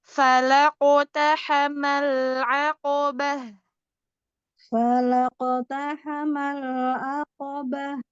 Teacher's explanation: Tahan sedikit lam sukunnya.